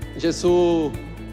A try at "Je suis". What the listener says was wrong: Ele falou Jesus. Ele falou Jesus, mas o que ele deveria ter pronunciado é Mas a pronúncia correta é je. Faz a boca do O e fala E. Não é G, é je, certo? Je.